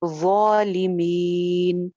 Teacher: ظالمین، ظالمین، مین پہ جو ہے وہ مد عارض لگائیں گے پیچھے یا مدہ پہ، اور اس کو 2 سے 3 الف لمبا کریں گے. مین نہیں کرنا، ناک میں آواز نہ جائے